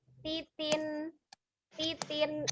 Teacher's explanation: ujung lidah itu memang benar-benar menyentuh gusi atas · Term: nun sukun